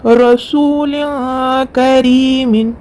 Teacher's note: نون کی آواز کو ناک میں چھپا کر پڑھیں گے۔ کاف کے اوپر زبر ہے، جل پڑھیں گے۔